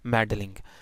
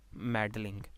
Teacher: So for example, if I have meddling, so I will pronounce it like this, meddling. And maybe in some regional dialects, or maybe sometimes in a very fluent speech, someone may omit the property of syllabic from L and say like this, meddling.